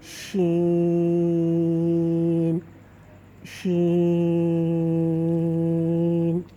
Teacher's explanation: اب آتے ہیں تصویر کی طرف کہ یہ آپ دیکھیں کہ آپ کی وسط زبان جو ہے وہ اوپر والے تالو سے لگ رہی ہے۔ جیم میں تو بالکل ٹچ ہو رہی ہے لیکن شین میں تھوڑی سی نیچے ہی رہے گی، بالکل ٹچ نہیں ہوگی اور شین ادا ہوگا۔